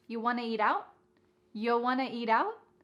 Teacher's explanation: And then we have reduced want to to become wanna.